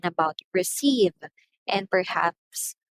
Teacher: in about receive and perhaps final syllable is stress